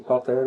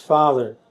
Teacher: the final R has remained, but otherwise the initial P has become F, and the middle consonant T has become Th